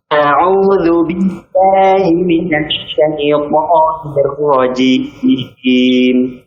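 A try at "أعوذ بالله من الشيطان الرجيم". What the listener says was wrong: Untuk huruf hamzah ya, pada kata a'udzu, baik, jangan terlalu tipis sehingga jadi imalah ya. Jadinya begitu, harusnya a biasa saja. Jangan ini terlalu miring.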